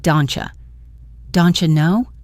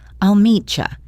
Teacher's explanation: the T sound and the Y sound often combine to make a chi sound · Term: assimilation